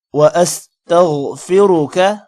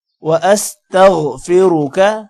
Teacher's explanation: غین کو موٹا کریں گے۔ وَأَسْتَغْفِرُكَ، کا کو لمبا نہیں کرنا۔